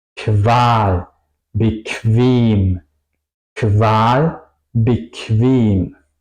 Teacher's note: Se pronuncia más como una K y una W en español, diría yo.